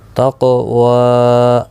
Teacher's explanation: دیکھو قاف موٹا بھی پڑھا جائے گا اور ساکن بھی ہے، اس پر قلقلہ بھی ہوگا